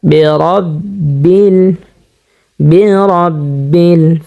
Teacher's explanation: তো জবর যেহেতু আমরা দেখতে পাচ্ছি, সে কারণে রটা আমরা মোটা করিয়া পুর করে পড়ব